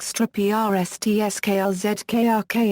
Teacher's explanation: difficult for a non-native speaker due to the absence of vowels, although syllabic r is a common Czech and Slovak sound